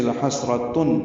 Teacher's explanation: تنوین کے بعد عین آنے کی وجہ سے لحسرتن، تن میں اظہار ہے